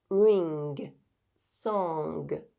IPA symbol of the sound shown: ŋ